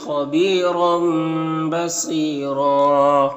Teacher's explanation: اس تنوین کے بعد با ہے تو تنوین کو اس میم سے بدل کر غنہ اور اخفا کے ساتھ پڑھیں گے، اس کو اقلاب کہتے ہیں.